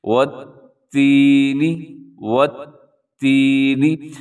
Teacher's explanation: آپ نے اس الف کو چھوڑ دینا ہے، واو کو ڈائریکٹ آپ نے تا کے ساتھ ملانا ہے، کیونکہ تا کے اوپر تشدید ہے۔ · واو کی ادائیگی میں آپ کے ہونٹ گول ہو جانے چاہیے، والتینی، اور جس حرف کے اوپر شد ہوتی ہے اس کو مضبوطی کے ساتھ پڑھا جاتا ہے۔ تا کے اوپر شد ہے تو آپ نے اس کو مضبوطی سے پڑھنا ہے، اور ایک سیکنڈ کے لیے اس کے اوپر رکنا بھی ہے